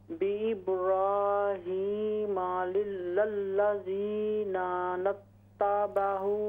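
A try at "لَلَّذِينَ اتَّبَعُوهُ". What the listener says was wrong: ये एक ही नून है, इस नून को ता से मिला दें। इन औलन नासी बिइब्राहीम लल्लज़ीना इत्तबऊहु। ये बेइब्राहीम लल्लज़ी नत्तबऊहु।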